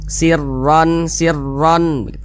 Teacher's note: pangkal lisan kita itu naik terangkat ke atas huruf rnya yang kita tebalkan